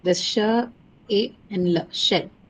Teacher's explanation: It doesn't have a diphthong. Okay, this is a word which doesn't carry any diphthong. It only has the pure vowel a